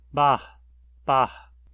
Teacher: uma aspiração, que é formada de uma abertura e relaxamento da glote, reduz a frequência do som da vogal automaticamente.